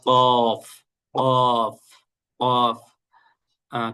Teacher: কফ একদম মোটা করে উচ্চারণ করতে হবে